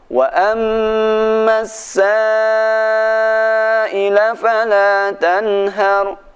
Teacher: Ada tanda mat, tanda bendera bertemu dengan hamzah. Panjang 4 harokat.